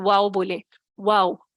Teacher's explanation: واو جو ہے دونوں ہونٹوں کی گول نا تمام ملنے سے ادا ہوتا ہے، یعنی تمام مل جائیں گے تو آواز بند ہی ہو جائے گی. نا تمام ملانا ہے کہ گول بھی کرنا ہے، دائرہ بالکل چھوٹا کر لینا ہے.